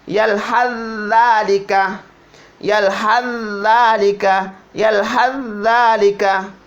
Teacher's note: Yalhas dibaca dulu sa-nya, baru za, salah. Jadi za-nya itu dileburkan, tidak usah dibaca. Langsung masuk di za yang kedua.